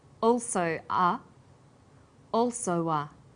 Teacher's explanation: This is linking type 2. Vowel plus w plus vowel.